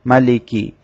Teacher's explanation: মালিকি স্বাভাবিকভাবে উচ্চারণ করতে হবে, এখানে টান দেওয়া যাবে না